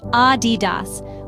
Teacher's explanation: Adidas, with emphasis on the first syllable.